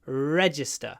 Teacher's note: On the first syllable, the stress. Re, re, re, make the re long.